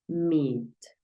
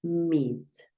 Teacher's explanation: sonido cuando tú veas en escritura dos e esta doble e la vas a pronunciar como una i pero no es un solo golpe de I vas a darle un poquito de continuidad a este sonido